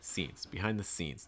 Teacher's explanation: this is you want to stress scenes scenes behind the scenes the behind is usually going to be reduced it's going to be said typically pretty fast so you don't want to spend a whole lot of time